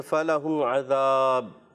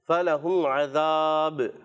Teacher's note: اچھا, جب درمیان میں آپ سانس اگر ٹوٹتا ہے جیسے فَلَهُمْ عَذَاب, تو با حرف قلقلہ سے ہے تو ہم نے وہاں پر بھی قلقلہ کرنا ہے. فَلَهُمْ عَذَاب, قلقلہ وہاں پر بھی ادا کریں گے.